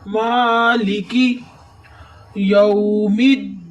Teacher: मीम पे खड़ेंगे इसलिए मीम को थोड़ा सा लंबा करेंगे